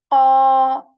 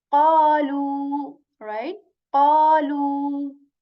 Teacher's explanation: This qaf letter is also a heavy letter, so we will have to say like qa, our mouth will, full. Mouth will be full, okay, when saying this because the back part of our tongue will be raised to say qa.